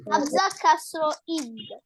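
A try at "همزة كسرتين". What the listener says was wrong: কাসরাতেন, কাসরাতেন, শুধু কাসরা বললে হবে না, কাসরাতেন ইন,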